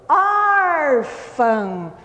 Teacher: A palavra, a sílaba que demora mais é o or. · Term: sílaba tônica